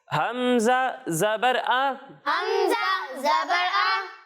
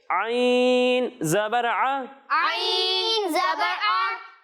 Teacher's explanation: जब हम हमजा की अदायगी करेंगे तो इसे हलक के निचले हिस्से से पढ़ेंगे।